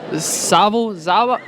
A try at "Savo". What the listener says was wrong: Not that hard. It's not that hard to pronounce. You don't say the Z. You say the S. Sava.